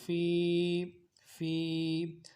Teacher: یا ساکن اس سے پہلے زیر ہو، یا مدہ کہلاتا ہے، ایک الف مقدار میں کھینچیں گے